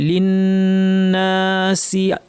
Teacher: নুনের উপর তাসদীদ লম্বা গুন্না, তারপর আলিফও টানতে হবে